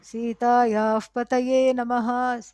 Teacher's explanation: So that is Upadhmania, because the Visarga Sita Yaha of Sita, Pati, husband, Lord of Sita, and so that Visarga contacts Pa. So that Visarga contacting Pa makes that half F sound. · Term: Upadhmaniya